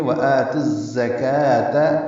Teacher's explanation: اب بیچ میں واو الف لام نہیں پڑھیں گے، زا تیز صفیر کی آواز سے ادا کریں گے